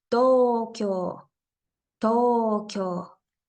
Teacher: plantea en color amarillo ejemplo de esta palabra sería Tokio to ambas sílabas tienen una o y una u por eso estoy haciendo alargamiento en las dos partes